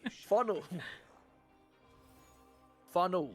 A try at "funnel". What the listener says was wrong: You're saying funno, like, you know how Australians end everything in an O?